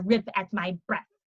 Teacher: the breath at the ends would be more of an F sound